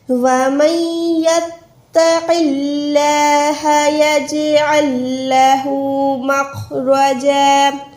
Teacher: خو موٹا، رو موٹی، جیم الف زبر جا ہو جائے گا کیونکہ یہاں پر رک رہے ہیں